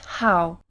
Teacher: air we will start with the H sound like in English while blocking your throat and putting your tongue close to the uvula you will try to pronounce the H sound you should end up with the light friction